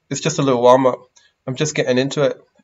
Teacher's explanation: a lot of t's omitted like in american english